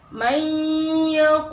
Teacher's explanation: Huruf nun matinya ini dimasukkan ke dalam huruf ya, sehingga hurufnya ya ini bertasydid dan harus didengungkan, tidak hanya dimasukkan. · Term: idgham bi gunnah